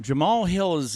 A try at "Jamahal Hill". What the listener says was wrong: Jamahal. Not Jamal. Jamahal. There's an extra A in there.